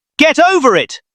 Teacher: The t from get moves over to over. The r from over moves over to it. It sounds like one long strange word. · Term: linking